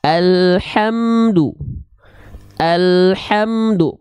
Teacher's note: pastikan dia keluar dari bagian tengah tenggorokan dan berbisik karakteristik nafasnya